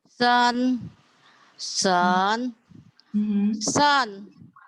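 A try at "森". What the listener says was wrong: Oh, nada tiga gini. Sen. Sen. Sen. Pendek ringan. Kalau SHEN, shen. Ya, lidahnya ditempelin di langit-langit. Shen. Tiganya gini. Tiganya masih belum ini ya, belum terlalu tepat ya. Shen. Tiga.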